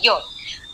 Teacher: यकार का उच्चारण स्थान है तालु। तो जिह्वा जो है, जिह्वा और तालु थोड़ा सा स्पर्श होता है। ईशत यानी थोड़ा सा।